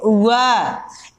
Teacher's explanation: वह का उच्चारण स्थान होगा दंतोष्ठ, यानी दंत और ओष्ठ